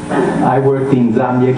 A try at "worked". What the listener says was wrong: Worked. We hear the R. In English, the R is silent, but I could hear worked. There's a little bit of the R coming through. It should be a shorter sound.